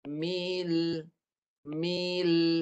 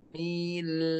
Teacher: Lam mati dengan bunyi melencong. Mi dulu baru matikan lam.